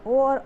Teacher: ओ और ओ क्या होता है, कंठ ओष्ठ, मतलब कंठ से और ओष्ठ दोनों जगह से इसका उच्चारण होता है